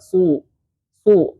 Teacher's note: su di sini huruf shad, jadi dia tebal